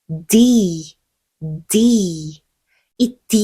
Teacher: 윗니 바로 뒤쪽에 혀끝을 갖다 대고요 혀끝부분이 입천장에도 살짝 닿을 거예요 공기를 잠시 막았다가 그 울림을 강하게 터트려 주시는게 중요해요 이때는 성대를 울려서요 다시 윗니 바로 뒤에 혀끝 갖다 대시고요 입천장을